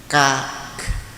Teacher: Jadi ditekan kemudian nafasnya keluar. Jadi suaranya ditahan tapi nafasnya keluar. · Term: hamas